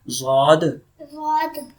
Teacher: So side of the tongue touches upper molar. Okay. You can pronounce from right side or left side.